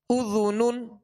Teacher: ذال کو نرمی کے ساتھ ادا کریں گے اس میں سیٹی کی آواز پیدا نہ ہو